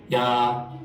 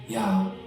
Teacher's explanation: So we could take the same syllable, ya, which with that tone means tree. But if I do it with breathy voice, ya, it means he carries